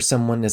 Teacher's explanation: just remember that as turns into something closer to is in very rapid speech but it's very reduced too